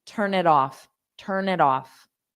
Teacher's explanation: this T is between two vowels. So if I say it, well, then I have to pause. So why not just avoid that by doing it with a soft D?